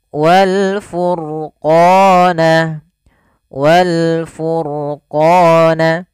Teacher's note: pada lafal ro furqana ini rnya dibaca dengan tebal maka ini kita bisa katakan dengan ro tafkim namanya dibaca dengan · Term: ro tafkhim